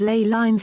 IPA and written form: leɪ laɪnz (Ley lines)